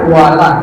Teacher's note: Walad, doanya tebal, lanya tipis.